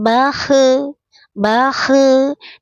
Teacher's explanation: Bakhe tidak boleh dipantulkan ya karena kha bukan huruf qalqalah. Dia roh mengalir suaranya.